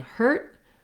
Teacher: the t and then i stop no air gets released so hurt is like very short vowel with my tongue marking the t and no release